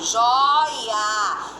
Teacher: O e A altos. O I está fraco, está baixo. Semivogal no meio, eu não tenho tritongo nunca.